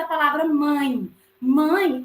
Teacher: Mãe, o A é a minha vogal e o E deixa de ser vogal e passa a ser semivogal.